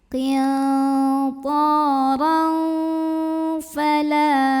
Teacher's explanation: Maka tanwin fathahnya bunyinya samar-samar. Jadi kita siap-siap mau membunyikan huruf fa, siap-siap ke makhraj fa ya, disertai bunyi dengungan. Tapi dengungnya sama samarnya seimbang karena fa ini makhrajnya tidak terlalu dekat juga tidak terlalu jauh dari huruf nun. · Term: ikhfa awsat